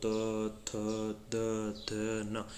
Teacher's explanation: अपनी जो जीभ है ना, जो जीवा है वे जाकर के ऊपर यहाँ पे दांतों से टकरा रही है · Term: दंत्य